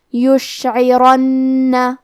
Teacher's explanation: کلمت یشعرن میں کیونکہ یہاں را پہ زبر ہے تو ہمیں حرف الرا کو موٹی آواز میں پڑھنا ہے۔